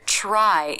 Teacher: in the word try it's harder to see that the tongue has pulled back because the lips come into a more tightly rounded position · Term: TR cluster